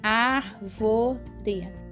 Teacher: árvore recebe o ar é a sílaba mais forte então é uma palavra proparoxítona lembraram disso então vamos agora voltar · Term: sílaba tônica